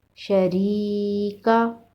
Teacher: ری کو ایک الف کے برابر لمبا کر کے پڑھیں گے